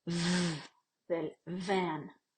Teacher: en inglés tenéis un fonema fricativo labiodental sonoro